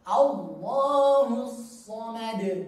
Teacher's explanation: Allah, A-nya tipis, Allah-nya tebal.